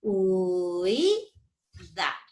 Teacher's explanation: la primera vocal yo la voy a pronunciar más larga de lo normal para que esto no se separe. O sea, voy a decir así, uy, uy, da. · La Real Academia dice que hay un alargamiento, eso es lo que dice, habrá un alargamiento fonético, un alargamiento fonético, un alargamiento fonético de la primera vocal cerrada. hay un alargamiento fonético de la primera vocal cerrada. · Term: diptongo homogéneo